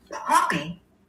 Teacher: you're not getting the vibration until you get to the vowel. Okay. So it's still a stop. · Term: bilabial stop